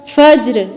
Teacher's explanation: مطلع الفجر جیم پر بھی قلقلہ ہوگا اور جزم اس کی باقی رکھ کے پھر وقف کرنا ہے